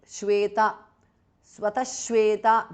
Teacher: Visarga changes to shu there. Shweta. Swatashweta because of sandhi.